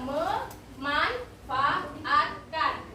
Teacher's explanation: perubahan bunyinya itu dari prefiks men berubah menjadi mem karena menyesuaikan bunyi awal kata dasar manfaat